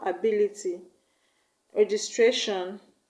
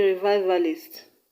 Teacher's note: ability is stressed in BI, registration is stressed in GIS, and revivalist is stressed in VI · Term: stress on the second syllable